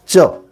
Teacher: च कहिएगा तो जीभ तालु टच करेगा, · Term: तालव्य